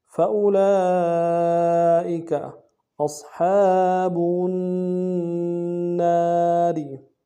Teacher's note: حمزہ کو صاد کے ساتھ ملانا ہے، صاد کو موٹا ادا کریں گے · لام کے اوپر مد ہے، کھڑا زبر بھی ہے، مد اصلی ہے، کم سے کم 3 الف دار میں کھینچیں گے